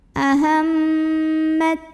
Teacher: mim ini didengungkan. Jadi bunyi amnya tahan sampai ada getaran halus ke hidung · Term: gunnah musyaddadah